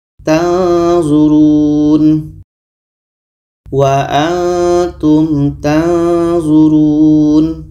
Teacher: ketika sebut huruf nun kita sudah merasakan huruf d o maka akan terhasil di situ bunyi samar Oke bunyi samar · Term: ikhfa